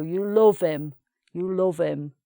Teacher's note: Often in the north the h at the beginning of a word is missing as well.